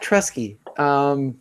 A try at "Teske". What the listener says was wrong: Teske. No R.